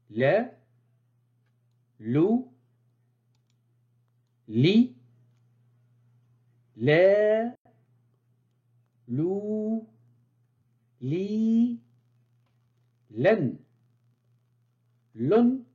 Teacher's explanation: se prononce au niveau de l'avant de la langue qui s'arrondit et vient se coller à la partie dure de l'avant du palais